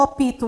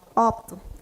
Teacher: Mas nós tendemos a fazer um apoio vocálico, porque é coisa do português